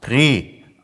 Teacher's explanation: Also das T ist verschwunden, das A ist zu E geworden.